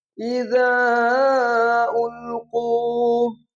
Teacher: یہ جو زال الف مد، یہ جو مد ہے اس کو کہتے ہیں چھوٹی مد، اس مد کو 3 الف کے برابر لمبا کرتے ہیں